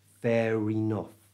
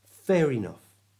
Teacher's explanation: We join that R sound from the end of fair into the vowel sound at the start of enough, so it becomes fair enough.